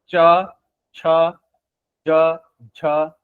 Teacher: आपकी जीभ मुंह में कहां जा रही है? तालु तालु तालु में जा रही है। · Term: तालाव्य व्यंजन